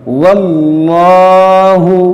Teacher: لام سے پہلے زبر ہے, تو اس لام کو موٹا پڑھیں گے